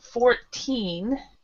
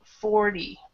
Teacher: Now, the 14, the stress is on the last part.